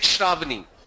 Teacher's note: The thing is, when we speak to anyone, habitually what we do is, the first syllable of the name is usually louder. The second or the last syllable, the tone falls.